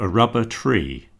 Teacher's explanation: You see there's stress on the word tree